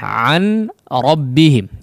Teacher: Idgham bila gunnah an rabbihim. Ya, nun sukun yang bertemu dengan huruf ra maka diidghamkan tanpa disertai dengan gunnah